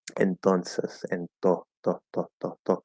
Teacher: I really hate technical terms because they're not particularly useful, but uh, it explodes, so to say, compared to other T's in other languages, as in entonces in Spanish, which sounds like a duller T. Yeah, the reason why it sounds like a duller D or duller T is because Spanish uses a dental T